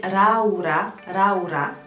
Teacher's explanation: nu există l de la la Laura există doar R Laura va deveni raura